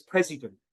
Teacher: the stress is on the first syllable, the pre part of it, then that means that vowel in that particular syllable has to be clear. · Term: stressed